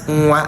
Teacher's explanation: Your pronunciation is going to go backward as it goes at the back. It comes from the velum. That's where the sound comes from. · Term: velar nasal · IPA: [ŋwa]